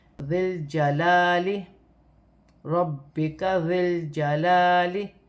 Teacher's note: ذال نرمی والا حرف ہے، ذال کو لام کے ساتھ ملا کر پڑھا جائے گا، لام ساکن ہے